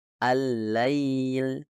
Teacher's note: menekan tepi depan lidah pada tempat yang tepat yang memungkinkan udara keluar dari kedua Sisi lidah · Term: lam